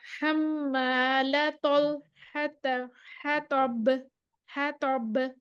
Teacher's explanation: हम लतल लतल है तब, है तब, तो फिर हमारे पास मोटा आ गया, मुफख्खम आ गया, तो की आवाज आएगी, तो लेकिन तो की आवाज निकालते हुए होंठों को हम गोल नहीं करेंगे, होंठ नहीं बाहर निकाल लेंगे, बस अंदर से आवाज आ जाएगी